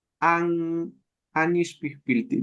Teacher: Es un sonido nasal, como que se nos tapa la nariz entre la A, entre la N y la I.